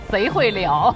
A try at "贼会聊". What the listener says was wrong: 贼 会 聊 ， 不 是 啊 ， 是 贼 会 聊 ， 不 是 贼 会 撩 ， 好 不 好 ？ 是 贼 会 聊 。